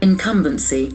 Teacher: Incumbency, accent falls on the second syllable.